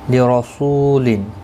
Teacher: نو مینو حمزہ ساکن کو جھٹکے کے ساتھ ادا کیا جائے گا، باقی کسی بھی حرکت والے حرف کو کھینچنا نہیں. لرسول را زبر کی وجہ سے پر پڑھا جائے گا